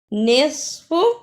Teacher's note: نصف، اسے نصف نہیں پڑھنا، صاد کی جگہ پہ سین کی آواز نہیں آنی چاہیے